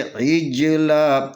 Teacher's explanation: اس کی آواز جو ہے نا اپنے مخرج میں اس کا جنبش ہوگا جیم کے اوپر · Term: قلقلہ